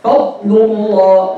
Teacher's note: Rakhawa means to let the sound flow. So the sound of the D'aad should not be cut off as some reciters do. This is why it's wrong to give it qalqala, because it is needless.